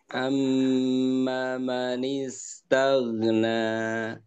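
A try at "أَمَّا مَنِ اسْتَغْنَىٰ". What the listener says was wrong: Maknya panjang Pak, maknya. Coba ulangi.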